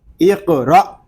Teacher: یہاں ہم را کو کھینچیں گے نہیں، کیونکہ یہاں پہ الف مدہ نہیں ہو رہا، بلکہ حمزہ ساکنہ کو جھٹکے کے ساتھ پڑھیں گے، اقرا، اس طرح۔